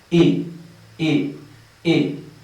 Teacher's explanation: Tienes que articular tu boca, todo tu aparato fonético lo tienes que articular de la siguiente manera, como si fueras a decir una E en español, E. Y te quedas así articulando y en lugar de pronunciar una E vas a decir una I.